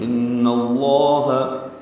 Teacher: ان میں نون مشدد پہ غنہ ہے اور لفظ اللہ کا حمزہ عارضی ہے، اس لیے نون کو لام سے ملا دیں گے، لام پر پڑھیں گے.